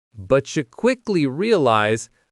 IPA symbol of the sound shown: tʃ